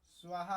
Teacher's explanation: इसका उच्चारण में जो है कि तीन मात्रा या तीन से अधिक मात्रा लगता है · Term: प्लुत स्वर